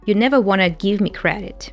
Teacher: reduces here want to wanna, dropping the T sound